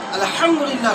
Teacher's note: হালাকের বা কণ্ঠনালীর মাঝখানে তো উচ্চারিত হয় আইন আর হা।